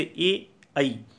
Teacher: कंठ और तालु इन दो स्थानों से ए, ऐ